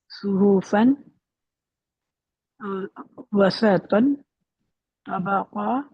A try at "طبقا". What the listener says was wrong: تو کو اور موٹا کیجیے.